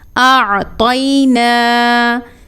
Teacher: عین کی ادائیگی ہم نے حلق کے درمیان سے کرنی ہے۔